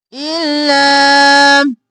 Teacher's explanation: ال اور لا، لام دو بار اور مدہ ہے کھینچا